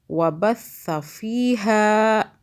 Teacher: ہا کو کھینچا، الف آ رہا ہے